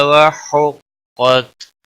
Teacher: قاف حروف مستعلیہ میں سے ہے، پر پڑھا جائے گا، وقف کی صورت میں تا ساکن ہی پڑھا جائے گا